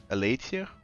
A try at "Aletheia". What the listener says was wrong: Oh, because you don't use THs. Aletheia.